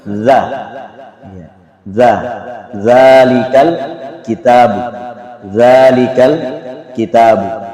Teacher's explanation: makhraj dari huruf zal ini adalah ujung lidah dengan ujung gigi. Zal, ujung lidah dengan ujung gigi seri bagian atas.